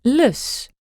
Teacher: the Dutch L, as in lus. which was made with just the front of your tongue.